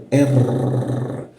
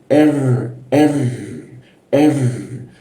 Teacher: kalau posisinya tepat menggunakan R-nya Arab itu hampir tidak ada getarannya